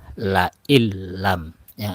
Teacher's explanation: kemudian yang baru kita pelajar adalah Iam Bil guna Apabila ada nun mati atau tanwin bertemu dengan lam dan ro maka masuk atau tidak disertai dengan guna